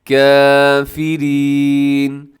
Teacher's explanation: کافرین کے اندر جو کافرین اس کے اندر را ہے اور را کے نیچے زیر ہے تو را باریک پڑی جائے گی